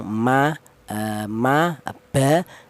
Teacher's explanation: Tapi untuk huruf ba dan huruf mem ya sama di kedua bibir, tapi untuk huruf mem dan huruf ba ini dihasilkan dari kedua bibir yang rapat. Kita bilang ma, ba itu kedua bibir rapat dulu.